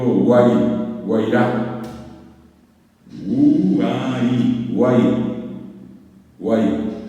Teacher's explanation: Y el acento está en la A, guay. Porque si el acento hubiera estado en la U, yo hubiera dicho guay. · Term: triptongo